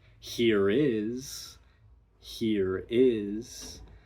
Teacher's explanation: It's what we call an intrusive R. So, there will be some R coloration at the end of a word if the following word begins with a vowel